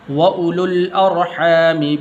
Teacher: لام کو آگے لام کے ساتھ ملانا ہے